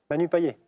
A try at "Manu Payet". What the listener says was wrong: Manu Payette. Enfin, on prononce à la réunionnaise, on prononce le T final, mais c'est ça. Manu Payette.